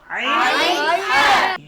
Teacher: কণ্ঠনালীর মধ্যখান থেকে হলকের মধ্যখান থেকে দুটি হরফ উচ্চারিত হয় আইন হা